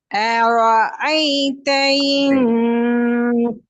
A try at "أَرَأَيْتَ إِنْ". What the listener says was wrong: أرأيتன்னு வருது உங்களோட சவுண்ட் இப்ப. நான் சொன்னேனே ரெண்டும் ஒரே இடத்துல இருக்கும். எப்படி ஏர்ன் எடுக்கிறீங்களோ அதே மாதிரி أرأي. أ أ أرأي.